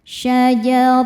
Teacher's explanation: Ro dibaca tafhim karena berharakat fathah. Cara bacanya ditebalkan.